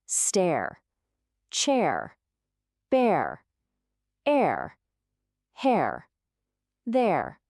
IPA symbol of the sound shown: eə